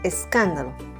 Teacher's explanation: Su sílaba tónica se encuentra en la sílaba can.